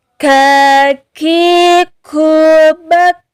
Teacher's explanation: huruf kaf dia sama juga di pangkal lidah, namun makhrajnya agak ke depan sedikit daripada huruf qaf. Agak maju sedikit, lidah pun atau pangkal lidah gak terangkat ketika membacanya.